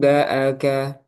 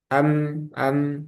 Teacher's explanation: Cara pengucapannya dirapatkan bibirnya. Itbaqus syafatain. Dirapatkan. Am, am. Sebagaimana membaca huruf mim.